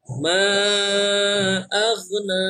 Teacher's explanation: Dia hukumnya menjadi lebih panjang karena setelahnya ada huruf hamzah.